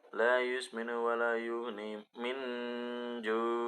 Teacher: Nun sukun bertemu dengan huruf jim itu adalah bacaan ikhfa. Masih sama dibaca samar.